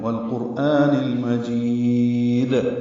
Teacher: گے، جی یا مدہ ہے، 2 حرکات لمبا کریں گے اور دال ساکن پہ وقف کریں گے تو قلقلہ ہو جائے گا ، والقرآن المجید، دال کو ملا کر ادا کریں گے، ملانا